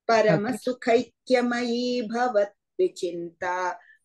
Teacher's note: you give that extra e sound because it's a dirgha e